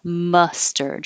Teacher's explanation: your jaw stays more closed and the tongue is pulled back